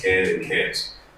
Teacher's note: if you don't pronounce the T sound at the end of can't, then it sounds like can, which is the exact opposite word.